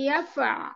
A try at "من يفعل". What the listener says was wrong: টান নেই ইয়াফআল।